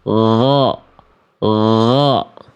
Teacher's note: Gain dialirkan suara tanpa nafas.